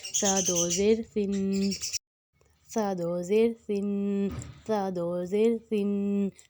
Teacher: دونوں دانتوں کے کنارے میں زبان کی نوک کو رکھیں گے تو سیٹی نہیں آئے گی اور وہ نرمی سے ادا ہوگا